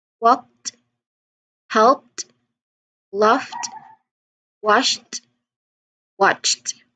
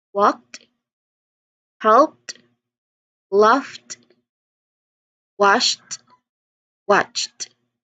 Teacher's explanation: So they are pronounced as um they the ed suffix here is pronounced as t the t sound